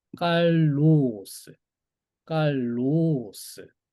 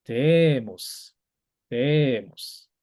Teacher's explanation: 올라갔다가 내려갔다를 두모라 안에서 다 하시면 됩니다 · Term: 서컴플렉스